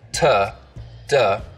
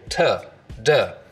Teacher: And what I mean by that is that instead of using this part of the tongue, the blade, for things like T and D sounds, so that there's a lot of surface contact, t, duh, we just use the narrow edge of the tongue, so it's a more focused contact area, t, duh. 10 tired turtles talk about dentists. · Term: edge-focused